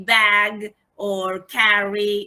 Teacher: the front of the tongue is raised just below the half open position